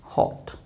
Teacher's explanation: with slight lip rounding and the pronunciation is hot not hot it's hot because it is short for not long